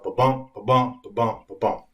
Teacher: Unstressed, stressed, unstressed, stressed throughout the whole thing. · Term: iambic pentameter